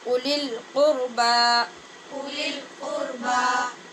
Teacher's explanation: یہاں پہ واو خالی ہوگا اور صرف حمزہ کی آواز پڑھیں گے